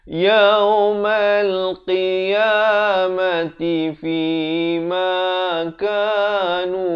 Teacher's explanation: Fi 2 harakat, ma 2 harakat, ka 2 harakat, nu 2 harakat.